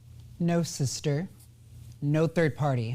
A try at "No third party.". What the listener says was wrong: No. Third party. You're doing the same thing with third party she's doing. Don't put it together.